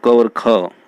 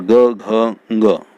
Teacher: क और ख ये अघोष हैं, और ग, घ, ग ये तीनों घोष हैं